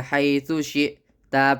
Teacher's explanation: حمزہ پر جزم ہے تو جھٹکا دے کر پڑھے